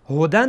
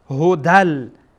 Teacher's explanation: اینجا بعد از تنوین لام آمده و لام از حروف یرمولونه، از حروف ادغامه، بنابراین اینجا ادغام میشه